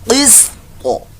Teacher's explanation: قاف، قاف سین زیر قس، طا زیر طی، قس طی، وقف میں قس طا، طا ساکن کا قلقلہ بھی یہاں کرنا ہے وقف کی صورت میں